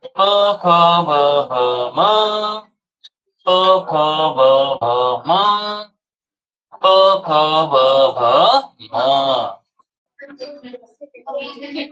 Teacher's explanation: ओष्ठ वर्ण म्हणजे ओठांचा एकमेकांशी संपर्क होणे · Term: ओष्ट वर्ण